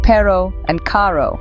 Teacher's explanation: the Spanish R can be rolled on the tongue creating a vibrant energetic sound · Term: trilled R